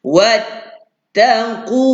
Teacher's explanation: Qaf baris depan, pangkal halkum, tolak anak tekak dalam. Jangan lupa tu, baris depan muncungkan mulut.